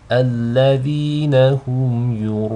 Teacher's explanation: pay attention to the ya and the hamza that's flanking the ra. These are both light. So you don't want the hamza to be read with tafkhim, nor do you want the ya to be read with tafkhim, just the ra.